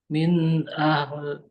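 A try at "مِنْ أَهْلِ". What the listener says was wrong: Dibunyikan saja li-nya.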